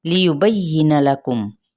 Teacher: لیبین لکم، یہاں پہ ان حرکات کو لمبا نہیں کریں گے مگر با کی زبر کو یا کے ساتھ ملائیں گے، ہلکا سا دباتے ہوئے